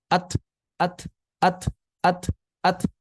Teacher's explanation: Karena pita suara tidak bergetar, makanya ketika terlepas hanya menghasilkan napas.